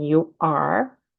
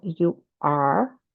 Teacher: los americanos dicen you are, y la lengua va hasta atrás del paladar